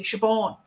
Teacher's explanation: we put the emphasis on the final syllable